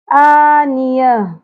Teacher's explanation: آخر میں ہاں ساکن کی آواز کلیئر ہونی چاہیے